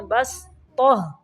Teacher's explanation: صاد کی آواز نہیں پڑھنا، با زبر سین بس پڑھنا ہے